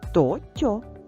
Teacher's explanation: то приголосний Т твердий а в складі тьо звук ть м'який